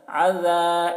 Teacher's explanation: یہ عین کو حلق سے ادا کر رہے ہیں، ذال کو بہت ہی باریکی کے ساتھ.